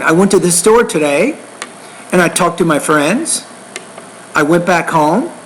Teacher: So when you get to the end of your sentence, you're rising or increasing your tone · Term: rising tone